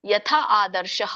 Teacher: ಬಿಡಿಸಿ ಹೇಳೋದಾದ್ರೆ ಯಥಾ ಆದರ್ಶಃ ಅಂತ ಹೇಳಬೇಕು ಯಥಾದರ್ಶ ಮಲೆ ಆದರ್ಶಹ ಅಂತ ಹೇಳಂಗಿಲ್ಲ ವಿಸರ್ಗ ಇದ್ದಾಗ ಅಲ್ಲಿ ಏನ್ ಹೇಳಬೇಕು ಸ್ವಲ್ಪ ಮಾತ್ರ ಹ ಉಚ್ಚಾರಣೆ ಬರಬೇಕು